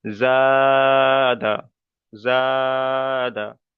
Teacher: জাটা এক আলিফ পরিমাণ টানবো, কিন্তু দাল দাল জাবার দা, এখানে এক আলিফ পরিমাণ টানবো না, কারণ এখানে এটা হলো হারাকাত। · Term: আলিফ মাদ্দা